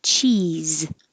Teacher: This final S looks like an S but sounds like a Z